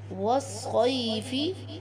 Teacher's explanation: یا ساکن سے پہلے والے حرف صاد کے اوپر زبر ہے یا حرف لین بن جائے گا، اس لیے یا کو نرمی سے پڑھیں گے